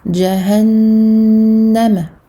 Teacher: Je fais une nasalisation très longue. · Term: noun al-mushaddada